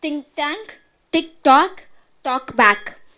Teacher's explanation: K has a glottal stop in the phrases.